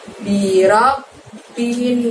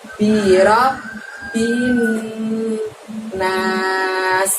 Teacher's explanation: ada nun tasydid, maka itu adalah bacaan gunnah yang artinya dengung, maka cara membacanya pun harus ditahan selama 2 harokat